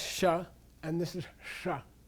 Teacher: because it's sanskrit written in tibetan letters what this is is you turn your tongue back this is retroflex these two dots represent a ref retroflex means retro means back